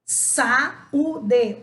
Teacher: O A e o U estão separados. Então, agora eu tenho um hiato.